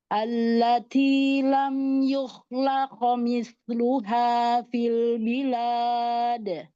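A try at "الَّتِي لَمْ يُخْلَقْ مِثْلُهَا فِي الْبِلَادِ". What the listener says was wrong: Naikkan lagi pangkal lidahnya.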